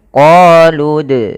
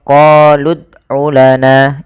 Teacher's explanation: Kemudian pada lafal dal sukun, di sini ada bacaan kita namakan dengan qalqalah. Dalam pelafalannya kita harus memantulkan dalnya. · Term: qolqalah